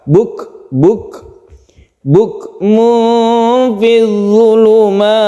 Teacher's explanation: Kedua huruf yaitu kaf dan ta, ini apabila disukun dia itu membentuk huruf yang berhamas atau bersifat hamas atau mahmus, yaitu ketika kita sukun kaf ini kita hembuskan nafas sedikit seperti lelehan dari kaf, tapi bukan kolkola. Buk fi dzulumat, membentuk suara S tapi sedikit saja.